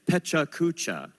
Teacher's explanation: equal stress on each syllable